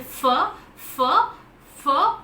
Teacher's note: the gap between the articulators is so small that the air goes out with friction and hence produces the fricative